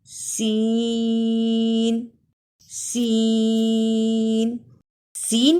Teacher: सीन सीन में सीटी की आवाज आनी चाहिए सीन सीन को अदा करते हुए तीन से पांच अलिफ की · सनाया सुफला के किनारे से टकराने के साथ-साथ सनाया उलिया से भी लगे तो यह हर्फ अदा होता है या जा को अदा करते हुए सामने ऊपर के दांत भी · سین سین سین کی آواز میں زبان کی نوک جب ثنایا سفلا کے کنارے سے ٹکرانے کے ساتھ ساتھ ثنایا علیا سے بھی لگے تو یہ حرف ادا ہوتا ہے. سین سین میں سیٹی کی آواز آنی چاہیے. سین سین کو ادا کرتے ہوئے 3 سے 5 الف کی مقدار کے برابر کھینچ کر پڑھتے ہیں.